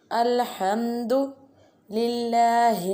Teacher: ha pronounced from the middle part of throat. Lillahi alladhi, there pronounce it very softly.